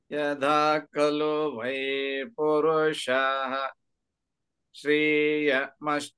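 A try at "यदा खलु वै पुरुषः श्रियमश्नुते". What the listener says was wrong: No, it's not dirgham. Sriyam asnute.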